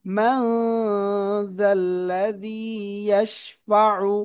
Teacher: একফা গুন্না হবে, নুন সাকিনের পর একফা হবে